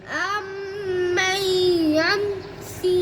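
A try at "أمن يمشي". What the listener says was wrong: आपने गुन्ना एक किया एक दो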